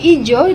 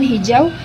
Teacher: kata hijau dimulai dengan konsonan H yang tidak ada dalam kata ijo. Nah, bunyi H ini penting untuk memberikan kejelasan dalam pengucapan dan membedakan kata tersebut dengan kata yang lain yang mungkin serupa.